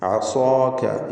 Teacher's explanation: സ്വാദിനും ദീർഘാക്ഷരമായ അലിഫിനും തഫ്ഖീം നൽകണം. ഇസ്തിഅലാഇൻ്റെ ഹർഫായ സ്വാദിനെയാണ് അലിഫ് നൽകി ദീർഘിപ്പിക്കുന്നത്.